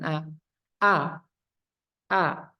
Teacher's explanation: harus jelas fathah a jangan sampai ada o-nya karena mengikuti lafaz Allah